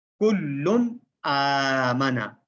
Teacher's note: تو یہاں پر لام پر تنوین آئی ہے ڈبل پیش، تو اس کو ہم نے کیسے پڑھنا ہے؟ نون ساکن یا تنوین کے بعد اگر حمزہ آ جائے تو وہاں پر غنہ نہیں ہوگا، یعنی ظاہر کر کے پڑھا جائے گا